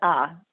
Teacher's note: Emphasis on the second syllable.